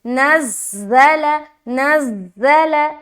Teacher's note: ज़ा में सख्त तरीके से निकालना है आवाज़, और आवाज़ सीटी किसी आएगी